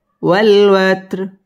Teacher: ওয়াত্র র বারিক হবে এবং এখানে ওয়াকফ করতে হবে।